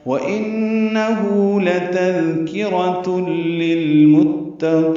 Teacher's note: واو ہونٹوں کی نا تمام گلائی سے ادا کریں گے. ان میں نون مشدد پہ غنہ ہے، ہو الٹا پیش مد صلہ، یہ دو حرکات لمبا ہے.